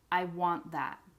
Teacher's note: But when you pronounce these words individually, one is want with the T at the end, and the other is wan with the N at the end. However, when we do pronounce want, we rarely pronounce it with the T at the end. Usually we cut it off and we say want.